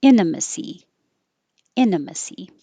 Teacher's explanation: you can say it without the T